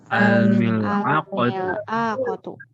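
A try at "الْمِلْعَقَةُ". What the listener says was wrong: Ainnya tidak panjang. Al-mil'aqatu.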